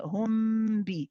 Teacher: when you do this ikhfa shafawi, when you say hum bi, we prolong it. Yes, it's got to be prolonged like the ikhfa.